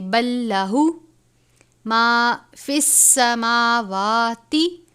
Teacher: میم اور واو کے اوپر کھڑا زبر ہے، ان دونوں کو ایک الف کے برابر لمبا کریں گے